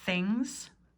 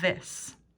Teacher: Work on your TH pronunciation. Things, voiceless. This, voiced.